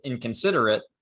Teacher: we have an n at the beginning but that's alveolar versus a k which is velar so your tongue has to go from the front of your mouth to the back your mouth pretty quickly and that's a lot of work that people just don't want · it's more efficient to make the nasal consonant velar so that your tongue doesn't have to move when you go to produce the velar consonant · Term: assimilation